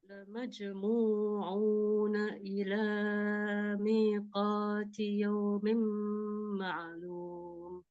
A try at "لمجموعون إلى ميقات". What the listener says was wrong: Ya, lamnya jangan terlalu panjang ya. 2 harakat aja. Lamajmu'una ila miqat. Ila mi. Panjangan. 2 harakat aja.